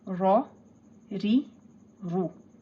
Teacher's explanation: Ra zabar ra, ra zer ri, ra pesh ru, ra ri ru. Ri will be thin, ra and ru will be pronounced in a thick tone.